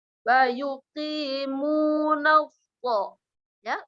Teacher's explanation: Jadi dia naik ke lidahnya, pertengahan lidah naik ke langit-langit atas dengan cara menekan, ya. Wa yuqimuna ya, ujungnya di bawah, tetap di bawah. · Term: huruf tebal